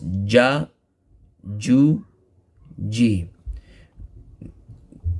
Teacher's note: jim with the center of the tongue touching the hard palate so see the center part of the of the tongue touching